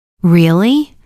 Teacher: Rising tone shows surprise or interest.